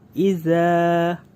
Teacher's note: ada alif tidak berharokat atau disebut hukum mad thobi'i dibaca dua harokat